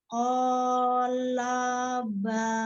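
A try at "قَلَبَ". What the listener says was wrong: Nah, hanya pendekkan. Jangan dipanjangkan. Jangan kolaba.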